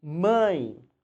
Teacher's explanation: Embora termine com E, o som é de I. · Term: ditongo